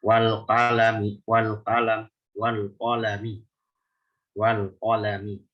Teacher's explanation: Jadi al-qafnya itu jangan sampai ngikut ketipisan huruf lam dan mim.